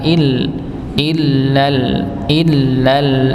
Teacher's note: untuk lam yang e bertasydid maka dihentakan Il illal illal asal di dihentakan ng biar hamzahnya ini nampak